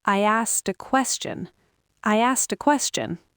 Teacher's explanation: You've got sk at the end of the first word and the t has moved to start the next word. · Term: connected speech